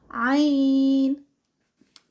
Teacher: आइन जो है वो वस्तु हलक से अदा होता है